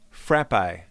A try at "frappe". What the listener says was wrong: you don't say cart, babe.